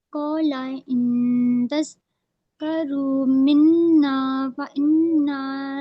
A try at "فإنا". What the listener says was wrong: فَإِنَّا نون مشدد سے گہرا غنہ کرو.